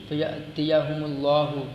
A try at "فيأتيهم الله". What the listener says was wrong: فیاتیہم اللہ، بس آئے گا، یاتیہ نہیں پڑھنا، فیاتیہم اللہ، بس آئے گا ان کے پاس اللہ.